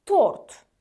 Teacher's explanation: Deməli, tort sözündə görürsünüz, T-dan sonra qalın O sait gəlir və biz avtomatik olaraq orada T samitini qalın tələffüz edirik.